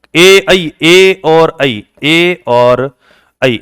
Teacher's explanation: ए और ऐ, इनका उच्चारण कहां से होता है? कंठ तालु से।